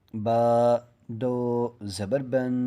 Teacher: یہ ناک میں چھپی، یعنی کہ ناک میں آواز ایک الف کی مقدار ہم نے چھپائی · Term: تنوین